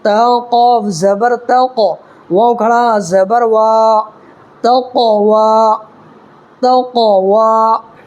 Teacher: دیکھیے یہاں بھی قلقلہ ہوگا اس لیے کہ قاف پر ساکن ہے اور قاف ہے۔